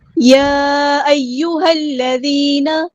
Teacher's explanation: یا ایہا الذین آمنوا کتب علیکم القصاص فی القتلی یا ایہا الذین، یہاں پہ ہمیں مد دکھ رہی ہے، ڈسکنیکٹڈ مد ہے، مد منفصل ہے، ہم نے اسے 4 یا 5 کاؤنٹ لمبا کرنا ہے